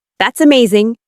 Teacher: When you say that's amazing, your tone rises with excitement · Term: rising tone